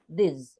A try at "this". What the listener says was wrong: with more vibration, with more vibration.